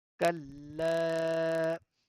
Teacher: we are putting a slight pause on the lam because lam is having a tashdid sign. This W sign is called Tashdid.